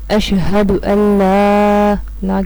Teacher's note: اشہد ان لا کے اوپر مد آ رہی ہے، اس لیے ہم اس کو 3 الف کے برابر لمبا کریں گے